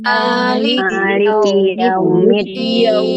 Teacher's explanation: Ma-nya dibaca 2 harokat ya, supaya nanti membedakan dengan malik pada surah ya, Malikin Nas